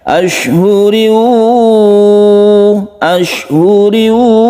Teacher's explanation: tanwin bertemu dengan wawu, kita baca idgham bi gunnah, kita panjangkan